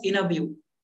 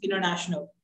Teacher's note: So what happens if we have T just after the N consonant? So we will skip the T.